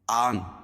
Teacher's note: کھڑا زبر قائم مقام الف مدہ کی، اس کو ایک الف کے برابر کھینچ کے پڑھیں گے